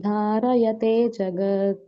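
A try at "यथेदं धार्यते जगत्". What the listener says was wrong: Dharyate, not dharayate. It is dharyate.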